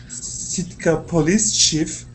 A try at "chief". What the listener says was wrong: Okay, yeah, just to let you know that CH is chi, not she.